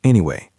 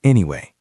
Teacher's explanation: To make it a bridge, you need to use a falling, rising intonation. It sounds musical.